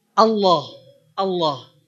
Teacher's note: Lalu kenapa ada bunyi yang terdengar seperti ada o? Itu bukan o, tapi a yang nebel.